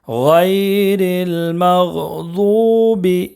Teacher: غیر المغضوب غین میں قلقلہ بھی نہیں کرنا ہے، مغ ایسا نہیں پڑھنا ہے، غیر المغضوب ضاد کو ایک الف کے برابر کھینچ کر پڑھیں گے اس لیے کہ واو مدہ ہے۔